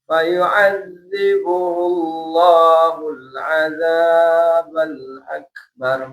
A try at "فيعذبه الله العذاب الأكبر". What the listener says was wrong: Ya, za-nya kepanjangan sedikit aja ya.